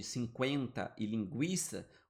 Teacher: o U é pronunciado, embora seja bem fraquinho